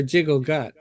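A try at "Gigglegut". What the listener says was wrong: No. Giggle. Not jiggle. It's in G, not a J. Giggle.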